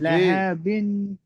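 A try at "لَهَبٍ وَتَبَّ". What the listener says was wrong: নয়, বিনের পরে ওয়াও এসছে তো চারটে অক্ষরের মধ্যে, তাহলে ওর সঙ্গে মিলিয়ে পড়তে হবে, বিন হবে না আর। লাহা বিউ ওয়া তাব্বা।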